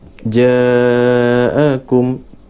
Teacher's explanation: Ja'akum, ja'a satu perkataan dan ada tanda ombak di situ. Hukum dia mad wajib, mad wajib muttasil. Mad wajib muttasil, cara bacaan 4-5 ataupun panjang dia.